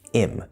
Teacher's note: Also notice in this sentence that him is being reduced to just im. The H is disappearing.